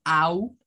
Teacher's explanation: el sonido Au que es como una a como una u es un sonido largo